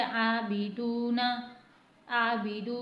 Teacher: अब यहां पर आबदना में हमें आ को खींचना है। ब को नहीं खींचना। दाल को एक हरकत के बराबर खींचना है क्योंकि वाव मत बन रहा है और नून को नहीं खींचना। · اب یہاں پر عابدون میں ہمیں آ کو کھینچنا ہے، با کو نہیں کھینچنا، دال کو ایک حرکت کے برابر کھینچنا ہے کیونکہ واو مدہ بن رہا ہے، اور نون کو نہیں کھینچنا.